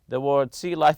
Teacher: and practice reading them loud remember to stress the first part remember we stress the first part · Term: compound noun